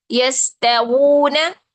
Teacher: अच्छा, कुछ लोग यहाँ पर ऊ पढ़ रहे थे, ऊ नहीं पढ़ना है, ठीक है। ये साउंड है वू, गोल होंठों से वू, ठीक है। वू ना, यस्तवूना। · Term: वाव का मखरज